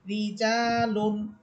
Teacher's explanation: এখন জানতেছি যে র হরফের নিচে জের হলে র হরফ চিকুন হবে।